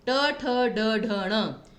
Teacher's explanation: फिर आपका क च ट, ट वर्ग जिसमें आपकी जीभ मुड़ जाती है, मूर्धन्य,